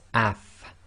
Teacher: Now if you say af, you'll notice that your top teeth, front teeth, come together with the inner portion of your bottom lips